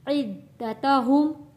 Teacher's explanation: دال کے اوپر تشدید ہے، دال کو سختی کے ساتھ پڑھیں گے